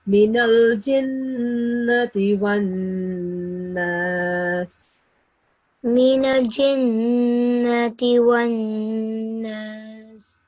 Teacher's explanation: whenever noon is mushaddad, you have to prolong it a little bit, like a couple of seconds. You have to stop on the noon sound for a couple of seconds to produce a nasal sound. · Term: noon mushaddad